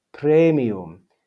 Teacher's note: the ah and the e stay together in the first syllable because they form a diphthong